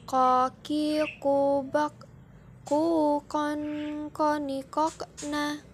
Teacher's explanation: Selanjutnya huruf ko. Huruf ini keluar dengan menyentuhkan pangkal lisan dengan langit-langit bagian belakang.